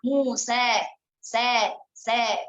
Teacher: Nah, kalau pas pada waktu ikut daurah yang di MKI kemarin, sudah memang tidak dibolehkan ketika membacanya dengan muse, enggak boleh. Jadi harus membacanya dengan condong fathah.